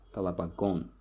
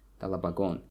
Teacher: the stress here falls on the last syllable, talabagon, on the suffix, talabagon.